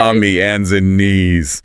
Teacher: Dropped H in hands, maybe a different vowel sound?